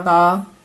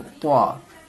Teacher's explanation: ता को बिल्कुल ता के जैसा बोलेंगे और त्वा को मोटी आवाज में बोलनी है